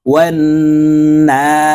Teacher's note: এই নুনকে এক আলিফ টেনে বলবো